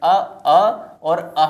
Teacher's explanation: कंठ से अ और अः जो विसर्ग आपका है इनका उच्चारण जो होता है वो कंठ से किया जाता है